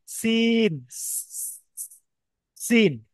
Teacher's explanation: পাতলা করে সাউন্ড হবে, দন্তের সাথে উচ্চারণ হবে।